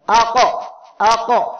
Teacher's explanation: এই হরফগুলো সাকিন অবস্থায় উচ্চারণের সময় তাদের মাখরাজের সাথে শক্তভাবে ধাক্কা লাগার কারণে অতিরিক্ত একটা আওয়াজ হবে। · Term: কলকলা